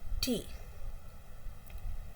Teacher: T is voiceless because there is no vibration of the vocal chords. And it's an alveolar plosive. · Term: alveolar plosive voiceless sound